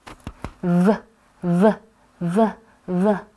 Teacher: You will feel vibrations in the neck. That's because it's a voiced sound. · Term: voiced V